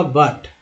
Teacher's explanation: बट में यू का उच्चारण अ के रूप में हुआ